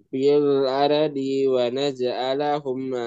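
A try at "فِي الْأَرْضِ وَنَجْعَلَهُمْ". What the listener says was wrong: Jim itu tidak pecah Pak ya. Jim itu keluarnya dari tengah lidah kita. Naji, tidak naji. Kalau naj itu keluarnya di ujung lidah.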